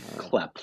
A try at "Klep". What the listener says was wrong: CLEPP. A little bit more emphasis on the P. So Klep.